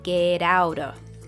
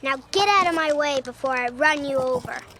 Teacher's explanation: The T sound in get and the T from out both turn into a soft D. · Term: flap T